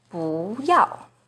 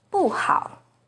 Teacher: 不 is the second rising tone in 不要, but it's the 4th falling tone in 不好